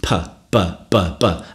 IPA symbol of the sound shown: { p }